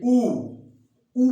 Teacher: ऊ में ओठ क्या हुआ, गोल हो गया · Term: वृत्तमुखी